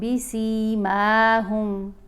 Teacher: سین کے نیچے زیر ہے، ساتھ یا ساکن ہے تو سین کو بھی ہم نے لمبا پڑھا، میم کے اوپر کھڑا زبر ہے اس لیے اس کو بھی لمبا پڑھا۔